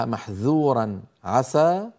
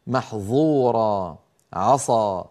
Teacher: يجب على القارئ أن ينطق الذال من محذورا والسين من عسى منفتحتين غير مطبقتين